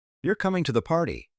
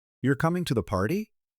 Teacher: You're coming to the party with falling intonation is a statement. You're coming to the party? With rising intonation is a question asking for confirmation.